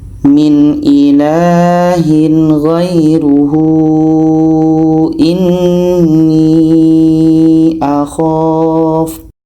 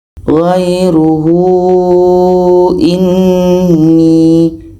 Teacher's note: Ada ha dhamir panjang waw kecil bertemu dengan hamzah. Ini mad silah tawilah. Panjang 4 sehingga 5 harakat.